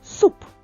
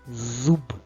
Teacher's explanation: в слові суп останній приголосний п глухий А в слові зуб б останній приголосний б дзвінкий